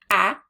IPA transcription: ă